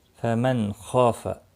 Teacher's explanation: فمن خاف، نون ساکن کے بعد حلقی خا آیا ہے، اظہار حلقی ہوگا، خا مستعلیہ ہے، پر پڑھا جائے گا، الف مدہ بھی ہے، ایک الف کے برابر کھینچ کر پڑھیں گے۔